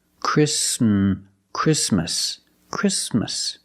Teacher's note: Sound exactly exactly or the word Christmas we don't say Christmas the t is between consonants so it is silent link the sound s with the m